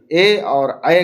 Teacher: ए और ऐ का उच्चारण स्थान कंठ और तालु है।